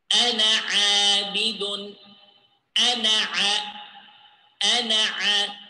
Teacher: I didn't pronounce the vowel the alif in the ana word.